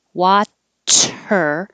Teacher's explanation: I'm definitely stopping the airflow, pressing up with some pressure behind my top teeth, and then releasing the airflow as I pull my tongue back for the R